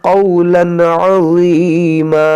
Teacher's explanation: یہاں پر تنوین کے بعد عین ہے، یہاں پر اظہار ہوگا، اور یہاں پر وا ہے اور عین ہے، دونوں کو صحیح سے ادا کریں.